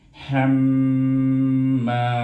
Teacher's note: Kemudian mim ni bertasdid, kita kena dengungkan ham itu. Mim itu kena dengungkan.